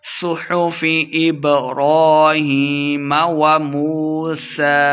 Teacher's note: اوپر کھڑی زبر ہے، دو حرکات لمحہ کر کے پڑھیں گے، سین کے اوپر سیٹی کی آواز بھی آئے گی